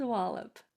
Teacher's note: That O is changing to the schwa sound because it's almost to the end of a longer word and there's a consonant after it.